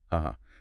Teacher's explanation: And if you draw it out and say it flat, uh-huh, that's pure sarcasm.